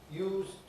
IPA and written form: juːzd (used)